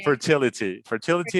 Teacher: the t because it's stressed we cannot flap that